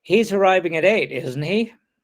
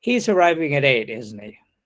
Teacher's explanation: The tag can be produced with either final rising or final falling intonation